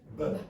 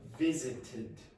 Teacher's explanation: Yes, it's bilabial. Okay, so you have two lips together. B. This one is labiodental, so that means this set of teeth are biting this lip.